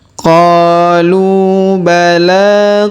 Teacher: sedangkan alifnya tidak dibaca atau tidak dianggap ya qu bala kemudian huruf la kita panjangkan dua harakat karena terdapat Alif kecil di atasnya